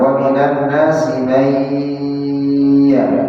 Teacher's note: Nun sukun bertemu dengan harful ya. Idgham ma'al gunnah.